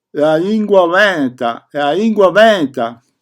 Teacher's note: la L evanescente cioè una L che si sente sì e no